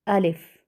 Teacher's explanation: حمزہ یعنی الف کو بغیر کھینچے لام کو فا کے ساتھ فوراً ملائیں گے اور اس کی ادائیگی ہوگی الف۔